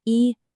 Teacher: This one is high and flat, like you're singing a note. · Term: first tone